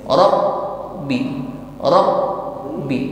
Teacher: Ila rabbi, untuk huruf ba dengan shadda, tekankan bacaannya. Huruf ba mempunyai atribut shiddah. Suaranya terhalang sepenuhnya. Jadi, saat mengucapkan ba dengan shadda, huruf tersebut ditekan dan bunyinya ditahan di sana.